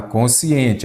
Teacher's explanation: ela é uma palavra paroxítona porque a sílaba tônica é a penúltima